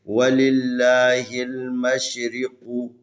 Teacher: میم زبر شین مش، را زیر ری، مشرقا پیش قو، مشرقو. یہ را ہے، را کے نیچے زیر ہے، اس لیے اس را کو ترقیق پڑھنا ہے